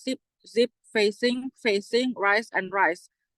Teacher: These are alveolar articulation or alveolar fricatives with the same place of articulation as T and D.